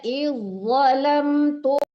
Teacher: langsung ditekan ke za tebal ya